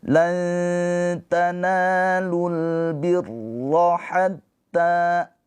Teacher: Ro ini dibaca dengan tafkhim tebal.